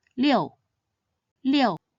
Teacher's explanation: It should be read in the 4th tone